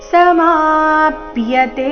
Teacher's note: ಸಮಾಪ್ಯತೆ ಮಾ ದೀರ್ಘ ಬಂದು ಸೌಮ್ಯ ಆಘಾತ.